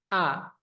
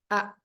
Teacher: Hamzah itu yang pertama jahar sifatnya nafas tertahan atau ditahan